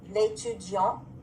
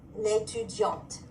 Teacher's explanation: I hear the T because of that E.